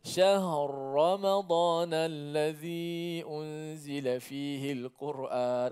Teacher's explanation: Sebab itu ada bacaan qiraat dipanggil bacaan secara idgham. Ra yang pertama tu diidghamkan ke dalam Ra yang kedua.